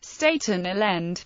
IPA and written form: ˌstætən ˈaɪlənd (Staten Island)